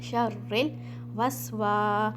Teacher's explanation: यहाँ पे आपने रा को लाम में मिला देना है